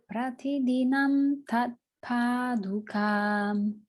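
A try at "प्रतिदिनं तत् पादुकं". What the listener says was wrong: Not with the makara, just ka. Tat paduka.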